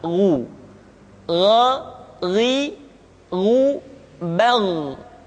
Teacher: Perhatikan posisi mulut kita ketika mengucapkan dalam keadaan fathah, tidak dimonyongkan, wo, tapi terbuka, gha, ri, ru. Ketika dhammah, baru bibir kita dimonyongkan sehingga keluar vokal u dengan sempurna